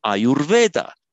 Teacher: It's because by sandhi, the uh becomes ur before the v